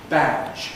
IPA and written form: bæʤ (badge)